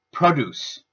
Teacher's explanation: The verb form has the stress on the second half of the word leaving the pronunciation of produce. The noun has the stress on the first syllable which changes the vowel that is used from schwa to o · The noun has the stress on the first syllable, which changes the vowel that is used from schwa to o, changing the sound of the word to produce.